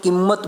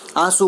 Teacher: ચંદ્ર, કિંમત આદિ આનુનાસિક વ્યંજન સૂચક અનુસ્વાર તીવ્ર કહેવાય છે, જ્યારે આંસુ, ભીંત આદિમાં ઉચ્ચારાતો અનુસ્વાર કોમળ હોય છે.